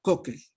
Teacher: en Concepción Tutuapa no le ponen glotal